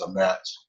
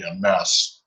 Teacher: A final tav has become an S. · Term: Ashkenazi pronunciation